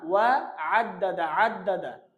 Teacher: আইনটা গলার ভিতর থেকে উচ্চারণ হবে